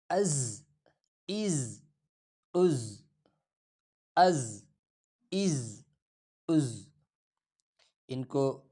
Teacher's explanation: اگلا لفظ حمزہ ز زبر از۔ ز دانتوں کو آپس میں ملا کر سختی سے پڑھا جاتا ہے۔